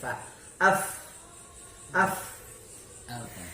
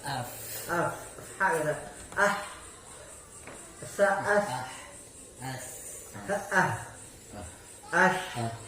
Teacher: Ini semua akan kuat. Hembusan angin itu akan kuat karena huruf-huruf ini mempunyai sifat hamas.